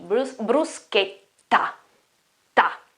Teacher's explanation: double T, so it's a longer T